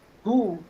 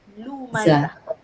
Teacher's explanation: dia punya makhraj tu hu dekat dalam. Hu. Tapi kalau makhraj untuk pencela tu kat lam, luar.